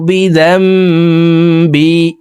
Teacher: নুন সাকিনের পর একলাবের হরফ বা আসছে, এই কারণে এই মিম দ্বারা পরিবর্তন করিয়া গুন্নার সহিত পড়ব। প্রিয় দর্শক, এখানে যদিও মিম নেই, আমরা মিম দিয়ে পড়ব। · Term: একলাব গুন্না